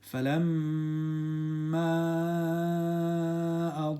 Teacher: the mim has a tashdid. So ghunna, 3 seconds